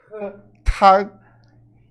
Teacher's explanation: Começa a letra T, ela vai ser um pouquinho diferente do português. A gente vai falar soprada. Tag. E o G a gente não pronuncia.